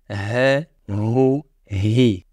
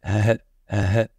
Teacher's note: La lettre H se prononce en ouvrant les cordes vocales. L'air et le flux sonore va passer librement sans être obstrué.